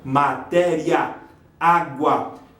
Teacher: Paroxítona terminada de ditongo. Essas duas vogais do final, elas não se separam.